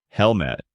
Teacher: with a clear H and the stress on the first syllable. Hel-mit, making it sound firm and direct. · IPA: /ˈhɛlmɪt/, /ˈhɛlmət/